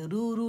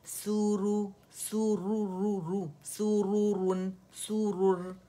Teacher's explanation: یہ باریک نہیں موٹا ہے, زبان کی جڑ اٹھائیں گے آپ, زبان میں ڈب بھی بنے گی. موٹا کرنے کے لیے استعالہ کا ہونا ضروری ہے, زبان کا جڑ کا اٹھنا ضروری ہے, ٹھیک ہے. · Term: را موٹی